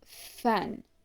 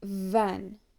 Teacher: sounds made by the bottom lip touching the upper teeth